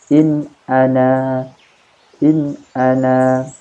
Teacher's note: bunyi suaranya tetap jelas itu ya dan tidak samar tidak mendengung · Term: izhar halqi